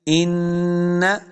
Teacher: ان ناشئۃ اللیل، ان، دیکھیں نون مشدد ہے، حمزہ کو نون کے ساتھ ملا کے پڑھنا ہے اور غنہ کرنا ہے